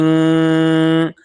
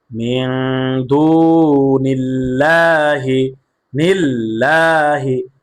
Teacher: আল্লাহ লামকে বারিক করে পড়েছি। অর্থাৎ পাতলা করে পড়েছি। কেন? কারণ এ আল্লাহর সাথে লামের পূর্বে জের আসছে।